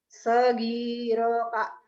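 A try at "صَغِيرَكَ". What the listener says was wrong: salah yang panjangnya ro ginya doang sogiroka kemudian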